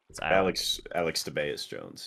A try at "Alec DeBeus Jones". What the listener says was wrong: Well, Alec. A-L-E-C. Do not say Alex DeBeus Jones.